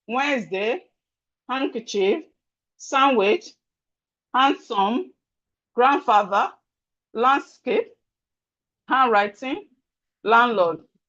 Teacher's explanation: compound word that have D in the middle, just know that the D is silent when you are pronouncing it